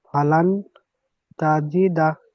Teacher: নুন সাকিনকে কি করতে হবে? গুণনা করে পড়তে হবে, এক আলিফ পরিমাণ গুণনা করে পড়তে হবে।